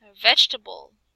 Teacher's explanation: The E after G is unpronounced.